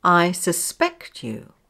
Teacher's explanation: The verb has stress on the second syllable.